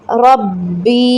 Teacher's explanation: با مشدد ہے، اس پہ رکیں، دباؤ دیں، اور یا ساکن سے پہلے زیر ہے، اس کو یا مدہ ہے، اس کو 3 سیکنڈ کے لیے کھینچیں گے، ربی۔